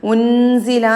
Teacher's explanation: സാക്കിനായ നൂനിന് ശേഷം സായി ആണ്, ഇഖ്ഫ ആണ്. നൂനിനെ മറച്ചു മണിക്കണം. ഉൻസില എന്നല്ല.